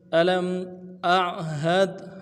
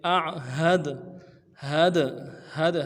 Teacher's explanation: हमज़ा को आइन के साथ मिलाना है, आइन पुख्ता करेंगे यानी मोटा करेंगे